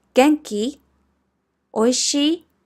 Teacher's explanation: You just rise the intonation at the end of the sentence